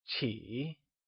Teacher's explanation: T is pronounced using the falling rising tone